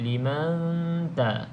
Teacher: Nun kosong selepasnya bukan lam ataupun ra, maka kita baca dengung 2 harakat